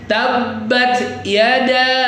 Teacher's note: da-nya itu kan ada mad bertemu dengan hamzah. Silahkan dibaca 4 atau 5 harakat. Kita pakai 5 harakat ya biar gak panjang ya.